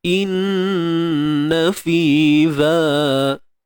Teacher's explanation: Huruf hamzah baris bawah i, kemudian nun yang bersabdu ni kita dengungkanlah, wajibul gunnah, dengung 2 harakat kadarnya